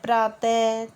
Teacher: हम विसर्ग को आधे है की तरह उच्चारण करते हैं